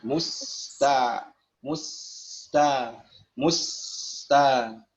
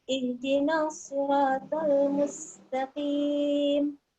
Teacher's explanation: Sin sifat lazimahnya itu rakhawah atau rikhwah yang bermakna suara tidak tertahan ya. Jadi sin sukunnya tidak tertahan.